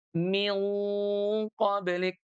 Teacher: Jadi tidak min qoblik tapi min qablik. Pangkal lidahnya itu terangkat ke langit-langit ya · Jadi kalau huruf nun atau tanwin bertemu dengan huruf ikhfa di mana huruf ikhfanya itu adalah huruf istiala atau punya sifat istialla maka nun atau tanwinnya bunyi ghunahnya itu ikut menebal